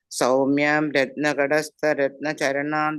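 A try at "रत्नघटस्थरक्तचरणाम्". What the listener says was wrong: ഇവിടെ ഒരു കറക്ഷൻ മാത്രമേ, രത്നഘടസ്ഥ രക്തചരണം എന്നാണ്. രത്നചരണമല്ല, രണ്ടാമത്തെ രക്തചരണം. രക്തത്തിന്റെ നിറത്തിലുള്ള കാല്, അതായത് പാദം, അങ്ങനെ.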